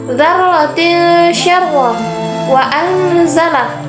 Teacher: bahasa adalah samar-samar atau menyembunyikan atau menutupi huruf-huruf ikhfa yaitu [Musik] suara nun sukun atau tanwin masih terdengar namun terasa samar antara idhar dan idgham